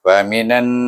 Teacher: ada dengung di sana nun bertasydid, baca dengan wajib gunnah. Kemudian selepas tu na itu baca dengan mat asli.